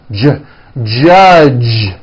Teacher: the J sound in American English is always voiced